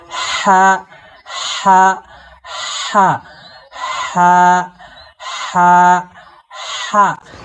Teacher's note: আপনারা এই যে মুখের সামনে হাত দিয়ে প্র্যাকটিস করুন। এই লম্বা হা উচ্চারণে একটা দীর্ঘ শ্বাস বের হবে, একটা বাতাস বের হবে। · লম্বা হাকে কণ্ঠনালীর মাঝখান থেকে বাতাস সহ শোষ করে পড়তে হবে।